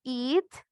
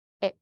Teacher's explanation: Se escucha ya a lo lejos una E, pero también sigue estando la I. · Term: I corta